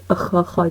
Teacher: خا کو پریشر دے کے زور سے نکالنا ہے گلے سے، ٹھیک ہے، تاکہ ہا کا اور خا کا جو ساؤنڈ ہے وہ کلیئر ہو.